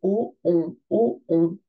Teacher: bien rond on fait un O et o on o on je ne bouge pas le O devient on